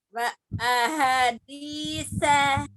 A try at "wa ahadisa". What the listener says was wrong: Belum panjang.